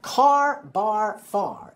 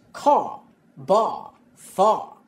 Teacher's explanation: the R sound at the end of the word is dropped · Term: the dropped R